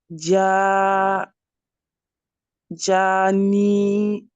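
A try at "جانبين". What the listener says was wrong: Attention, pourquoi t'as prolongé après le noun? Pas grave. Janibin, ouais. Bin.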